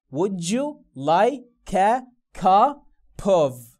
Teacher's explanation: طب انا عندي كلمه منتهيه بصوت ساكن اهو اللي هو البي، جاء بعدها كلمه تبدا بصوت متحرك الشوا، نفس الصوت اللي كان هنا ده، هشيل الساكن من نهايه الكلمه الاولى واحطه في بدايه الكلمه الثانيه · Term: وصل الكلام